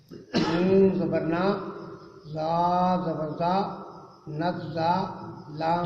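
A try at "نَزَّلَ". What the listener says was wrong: یہ آپ نے زا کو دبایا کیوں ہے؟ تشدید ہے اوپر. پھر کیوں دبایا؟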